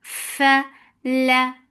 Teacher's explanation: For fatha, open your jaws, the sound is short.